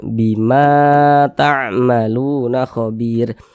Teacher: Ma dibaca panjang, mad tabi'i panjangnya 2 harokat. 2 harokat itu kira-kira sepanjang 2 ketukan.